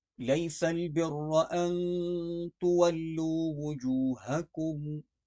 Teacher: لیس سین کو ہم سیٹی کی آواز میں پڑھیں گے اور سختی کے ساتھ۔ برہ کی را موٹی پڑھی جائے گی۔